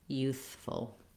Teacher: First syllable stress on both of these words.